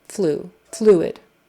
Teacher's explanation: Fluid, like the bird flew, and then id, fluid, fluid. With the accent on the first syllable, fluid.